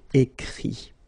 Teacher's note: even if you've got this final T, you don't pronounce it, so it goes like écrit.